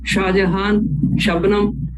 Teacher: Shah has to be uttered by full retroflex cerebral. It has to touch the deeper part of the palate when we say Shah.